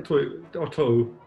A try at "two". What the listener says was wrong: By the way, you don't pronounce the W in two. Why are you pronouncing a W in one and not in two?